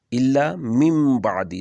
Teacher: نون ہے اس کے اوپر جزم ہے اور پھر آگے با ہے تو اس کو بھی ہم میم میں بدل دیں گے